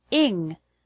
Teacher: the word English has the stress on the first syllable